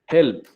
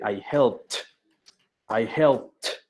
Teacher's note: Si hago el sonido de la P, no me vibran las cuerdas vocales. Por lo tanto, ese ED lo voy a pronunciar como una T.